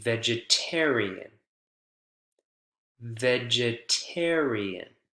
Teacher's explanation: that that syllable right before is the one that's stressed right the primary stress is on the syllable before directly before the suffix